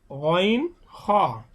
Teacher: হলকের শেষ ভাগ, অর্থাৎ কণ্ঠনালীর শেষ ভাগ হইতে গইন হ, অর্থাৎ আমাদের মুখে খুব নিকটস্থ কণ্ঠনালীর যে স্থানটা সেখান থেকে উচ্চারণ হবে গইন হ।